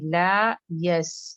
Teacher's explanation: لا یس دونوں ایک کوالٹی پہ جائے گا، لام علی فتح لا اور یاسین فتح یس. جیسے کہ ہم نے کہا کہ سکون کا بھی وہی ڈیوریشن ہوتا ہے جو حرکہ کا، تو یہاں پہ بھی یہ 2 حرکہ ہے، یہاں پہ بھی 2 حرکہ ہے، تو اچھے سے.